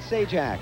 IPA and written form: ˈseɪdʒæk (Sajak)